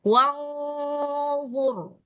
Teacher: Jadi gunnahnya tebal, ro-nya juga tebal. Jadi sama-sama tebal.